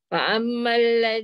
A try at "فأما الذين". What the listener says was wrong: dengung, dengung. Jangan jangan langgar. Fa'ammal ladzi. Dengung.